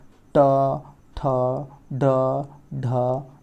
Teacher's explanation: मूर्धा से स्पर्श होकर जो ध्वनि निकलती है वो मूर्धन्य व्यंजन हैं